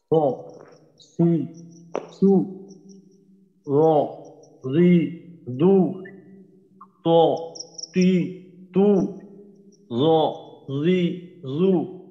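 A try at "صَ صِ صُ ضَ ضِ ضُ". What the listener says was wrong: আপনি এই সদ এবং দদের উচ্চারণটা আবার একটু শুনেন।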